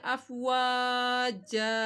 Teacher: اللہ کو۔ فی دین اللہ افواجا، یہاں پہ وہ کو دونوں ہونٹوں کی گلائی سے ادا کرنا ہے ، افواجا، جب رکیں گے تو ایک زبر پڑی جائے گی